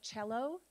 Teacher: C doesn't soften to the s sound in Italian. It softens to the ch sound.